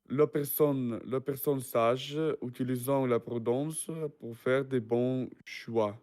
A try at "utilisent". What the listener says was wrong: Don't forget about utilise because we don't pronounce int.